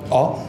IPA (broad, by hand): ɒ